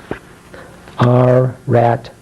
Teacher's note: it's kind of a growling sound. And your tongue is kind of pointing toward the roof of your mouth.